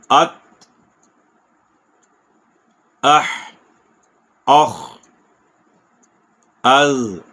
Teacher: ات زبان تا کے مخرج پہ جا کے تو رک جائے گی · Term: ساکن